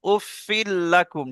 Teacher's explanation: তাই ও তানবিন ফাঁকে লামের সঙ্গে মিলিয়ে পড়তে হবে, বিনা গুণনায় মিলিয়ে পড়তে হবে। একে আহ, একে বেলা গুণনা বা তাম বলে।